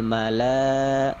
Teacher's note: Mala itu panjang mad wajib muttasil 5 angkat